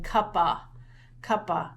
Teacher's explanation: And so it's close, but we're missing an end. Or some kids put a schwa ending, an a ending.